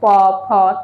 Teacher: প ফটাকে আমরা বলবো অষ্ঠ মানে ঠোঁট ঠোঁট টাচ হচ্ছে দেখো প ঠোঁট উচ্চারিত হচ্ছে তো এজন্য আমরা বলবো হচ্ছে ঠোঁট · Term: অষ্ঠ ব্যঞ্জন ধ্বনি